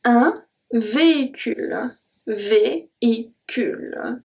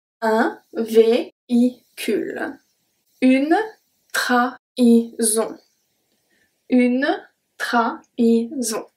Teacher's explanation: the H kind of act as a separation between the voyelles